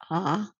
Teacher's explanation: a low vowel a really open vowel